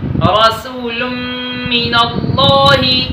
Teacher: نون تنوین کے بعد میم آیا ہے، ادھر ہم ادغام مع الغنہ کر کے پڑھیں گے